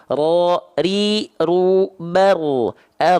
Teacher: Jadi ro punya sifat takrir, dia bergetar tapi nggak terlampau banyak-banyak, nggak terlampau berlebihan.